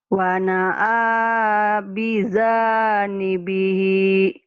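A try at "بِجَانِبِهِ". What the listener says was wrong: Jimnya keras. Wana'a bijanibihi.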